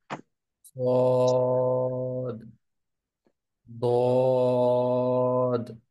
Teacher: এই সদ এবং দদের শেষে কিন্তু একটা কলকলা আছে, একটা ধাক্কা আছে। ওই ধাক্কাটাকে আর একটু স্পষ্ট রাখা।